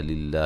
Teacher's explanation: لفظ اللہ کو باریک پڑھیں گے، اس سے پہلے زیر ہے